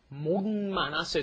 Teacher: So it's kind of like an N sound, isn't it, when it comes before an M.